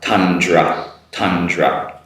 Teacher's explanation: there's very short vowel sound between the D and the R